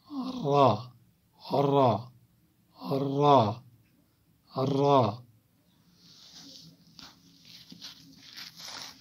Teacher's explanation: زبان کا کنارہ اور کچھ زبان کی پشت، یہ جو زبان کا کنارہ اور پشت ہے یہ دونوں تھوڑے تھوڑے ملتے ہیں ثنایا کے ساتھ، ثنایا علیہ جو اوپر والے سامنے کے دو دانت ہے، اور رباعی کے مسوڑوں سے جو ثنایا سے ملے ہوئے چار دانت اور ہے تو ان کے ساتھ بھی تھوڑا سا ٹچ ہوتا ہے، لیکن اوپر والے را را را را زا۔